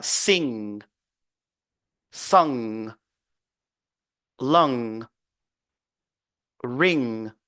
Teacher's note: dit a pas NG mais on va dire h et puis on bloque au niveau du G sans pour autant faire sortir le son du G